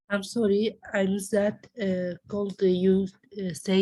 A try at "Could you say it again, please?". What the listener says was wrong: not called, it's could.